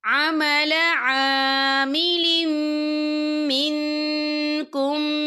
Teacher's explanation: انی لا اضیع عمل عامل منکم، یا دیکھیں عمل عامل، لام کے نیچے تنوین ہے، تنوین کے بعد جو ہے میم آ رہا ہے، اور میم جو ہے حروف یرملون میں سے ہے تو یہاں پر ادغام ہوگا، تو ہم اسے غنّے کے ساتھ پڑھیں گے